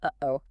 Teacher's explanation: A glottle stop is basically when you quickly close your vocal cords in your throat, stopping the air flow for a split second, and then release it. You do it without using your tongue or lips.